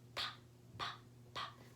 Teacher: your throat does not vibrate because we're just using a puff of air to make that sound